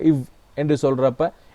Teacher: உதட்டு பல்லுன்னா மேல் பல்லும் கீழுதடும் பொருந்த பிறக்கும். ஏன்னா கீழுதல் மற்றும் பல் பொருந்த, அது கீழ்பல் பொருந்தாது. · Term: உதட்டு பல்லொலி